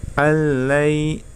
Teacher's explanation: Kemudian selanjutnya alai ya, di situ yang pertama ada nun sukun bertemu dengan huruf lam ya, itu hukum bacaan idgham bila gunnah, maka cara membacanya dengan tanpa mendengung ya. Alai, jadi langsung masuk ke huruf lam tanpa mendengung